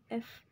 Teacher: Nah, ini tuh voiceless labiodental fricative.